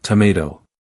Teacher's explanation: If you're speaking with someone from the UK, you might hear tomato, but in the US it becomes tomato. So, we've changed the vowel sound and the t sound, turning it into a d.